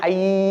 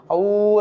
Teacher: ஐ அவ அந்த இரண்டு எழுத்துக்களும் நாம் சொல்லும்போது ஐ என்று அவ்வளவு நீட்டி சொல்வதில்லை. அவ சொல்லும்போதும் அவ என்று நீட்டி சொல்வதில்லை. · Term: நெடில் எழுத்துக்கள்